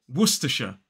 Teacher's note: one gets asked for all the time so this is werer three syllables the stress falls on that first syllable so it's w w then T and aw wer which is · 3 syllables, the stress falls on that first syllable.